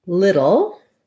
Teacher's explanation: someone also asked about idle these are actually very similar so for little again we have a flap t here so just like in literally little has more of a d sound than a t sound